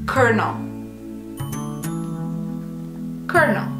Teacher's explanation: even though it's spelled with an L, we pronounce the first L like an R. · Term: R sound